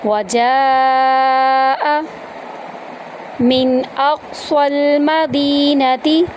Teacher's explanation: وجاء، واو کو ہم آرام سے پڑھیں گے، جیم کے ساتھ الف ہے اور اس کے اوپر مد ہے، اس کو ہم 3 سے 5 الف کے برابر لمبا کریں گے، حمزہ کو لمبا نہیں کریں گے۔